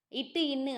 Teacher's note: இட்டு இன்னு ஆகிய இருமைகளும் நாவின் நுனி அன்னத்தின் நுனியை பொருந்துவதால் உருவாகிறது